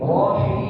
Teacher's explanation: Hinya tidak mengalir di hidung ya.